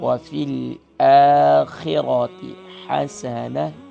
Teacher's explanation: وفی الآخرۃ اکثر پڑھتے ہیں وفی الآخرۃ، یہاں بھی ذہن میں رکھیں، حمزہ کے اوپر کھڑی زبر ہے، ایک الف کی مقدار کھینچیں گے، خا کو موٹا کریں گے، را کو بھی موٹا کریں گے، اور تا کو شارٹ ساؤنڈ کریں گے